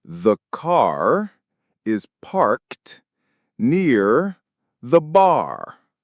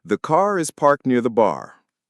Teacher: See how that one sound, that strong rhotic R, instantly changes the flavor of the sentence.